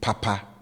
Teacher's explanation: will always be Papa with high tone on both syllables